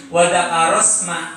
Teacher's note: wadakaros ma itu masih ada keluar angin dari pengucapan sin yang kita baca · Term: sifat hamas